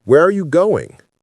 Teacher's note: Voice goes down on going.